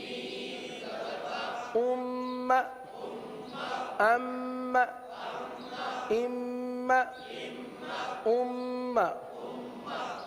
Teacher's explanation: ہمیشہ غنہ کریں گے، اور غنہ کی مقدار ایک الف کے برابر ہے